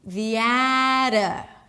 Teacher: The T is a flap T, and then it's a schwa. The ada. So it's not an I, or what you would assume to have in this word because of the spelling.